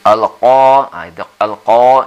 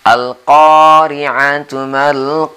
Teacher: Seperti biasa di sini sahabat-sahabat kita sering qa-nya ini ka biasa atau ka yang berada di langit-langit. Ini adalah qa, membacanya di kerongkongan pangkal atas ya. Dan kemudian selalu saya ingatkan atau kami ingatkan, jangan dibaca di tengah supaya tidak kedengaran tebal qa-nya.